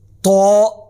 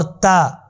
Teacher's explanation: آواز ایک جیسی ہے لیکن تو موٹا ہے اور تا باریک ہے